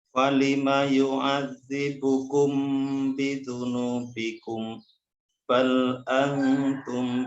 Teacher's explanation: Bal antum ditahan. Mim sukun ketemu ba ditahan.